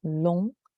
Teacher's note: long. You don't hear the G. It's another nasal sound example.